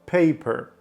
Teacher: Ми можемо поставити п і р але ставимо цей ненаголошене о між п і р Paper далі е український простий е як в українській мові далі